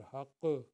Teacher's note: ये क़ाफ़ का कलकला आएगा